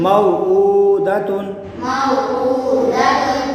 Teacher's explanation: حرف لین کو بغیر کھینچے بغیر جھٹکے دے نرمی سے معروف پڑھیں گے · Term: واولین